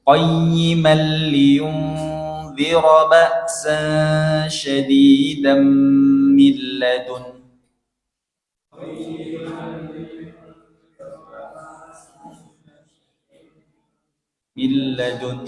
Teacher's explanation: bacanya harus ada dengung, ikhfa, itu lebih banyak pahalanya